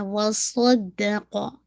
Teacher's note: صاد اینڈ قاف دونوں heavy رہیں گے، فل آف ہیوینس ہے